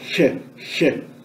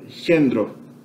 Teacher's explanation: representa a fricativa palatal, che, similar ao do alemão, o CH do alemão em ich